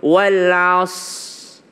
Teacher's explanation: Kesalahan kedua ketika membaca wal 'asr, kadangkala huruf ro-nya hilang.